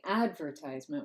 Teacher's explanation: I say advertisement with stress on the first syllable the primary stress